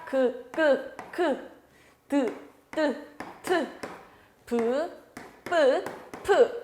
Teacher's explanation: 소리내는 방법에 따라서 자음, 파열음, 소리를 막았다가 터뜨리는 자음들